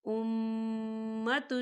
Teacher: یہاں دیکھیے امہ میم مشدد ہے تو یہاں غنہ ہوگا